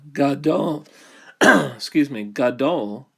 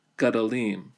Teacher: It reduces from a longer vowel to a vocal schwa.